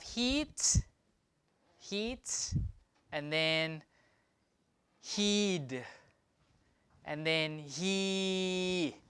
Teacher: So we can compare different length of different vowels. Shortest, longer, and longest. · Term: vowel lengthening